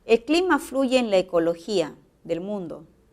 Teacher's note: esta oración tiene tono descendente, pero también podría pasar a ser una pregunta